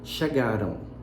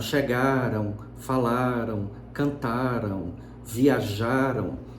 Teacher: Então, na escrita não aparece, mas na fala aparece. Então, você tem o A como vogal e um U como glide no final.